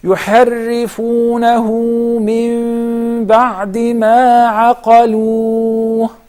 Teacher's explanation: the ha is the last letter of the word. And it is followed by a vowel letter. So that's why I have to apply the med 2 counts. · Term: mad al-silat al-sughra